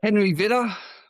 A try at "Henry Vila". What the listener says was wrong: It's Vila. It's actually one L.